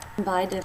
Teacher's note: jaw drops for the first part, and then the middle front part of the tongue moves up for the second part